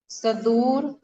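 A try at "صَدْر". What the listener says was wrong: सदूर तो नहीं है। सदर नहीं पढ़ेंगे, दाल के ऊपर जबर होता तब पढ़ते हैं सदर। सदर का मतलब SADAR, ई है SADR। सदर।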